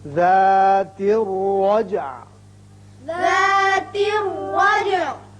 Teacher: یہ را پر ہوگا اس لیے کہ اوپر زبر ہے. جیم ساکن ہے اس کی صفت قلقلہ ادا کریں گے اور عین ساکن ہو جائے گا.